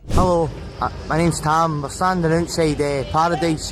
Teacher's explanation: The R's can be rolled and the vowels can sound much shorter than you'd expect.